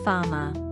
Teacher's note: The R at the end of words is also not pronounced and makes more of a schwa sound instead. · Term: Non-rhotic